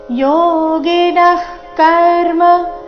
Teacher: ಕಾಯೇನ ಮನಸಾ ಬುದ್ಧ್ಯಾ ಬುದ್ಧ್ಯಾ ಕೇವಲೈರಿಂದ್ರಿಯೈರಪಿ ಕೇವಲೈರಿಂದ್ರಿಯೈರಪಿ ಯೋಗಿನಃ ಕರ್ಮ ಇಲ್ಲಿ ಯೋಗಿನ ಆದ ನಂತರ ವಿಸರ್ಗ ಇದೆ. ವಿಸರ್ಗದ ನಂತರದ ಶಬ್ದ ಕದಿಂದ ಶುರುವಾದ ಕಾರಣ ವಿಸರ್ಗದ ಉಚ್ಚಾರಣೆ ಅರ್ಧ ಖ ರೀತಿ ಬಂದಿದೆ. ಅಲ್ಲಿ ಶ್ವಾಸ ಬಿಟ್ಟು ಮುಂದಿನ ಶಬ್ದ ಕರ್ಮ ಅದನ್ನ ಉಚ್ಚಾರಣೆ ಮಾಡಬೇಕು.